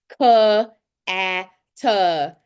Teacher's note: And I'm like, well, because you're adding a schwa sound, which is an extra schwa onto the end of the sound